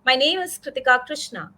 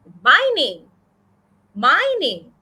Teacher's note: i'm giving more stress to my name